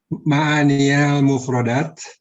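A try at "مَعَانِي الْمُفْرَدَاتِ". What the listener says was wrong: Ma'anil mufradat. Nah, kenapa tadi Anda baca ma'aninya ya dengan di fathah? Karena ketika Anda mengucapkan iqra ma'aniyal mufradat itu sebagai maf'ul bih, ya sebagai istilahnya objek dalam ucapan Anda tersebut.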